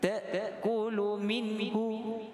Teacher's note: Kerana nun mati tersebut bertemu dengan ha, iaitu izhar halqi. Dia tidak ada dengung dan bacaannya jelas.